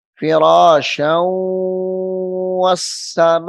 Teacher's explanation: اب یہ فراش شاؤں شین کے اوپر تنوین ہے تو آگے واو مشدد ہے، تو شین کو واو کے ساتھ ملائیں گے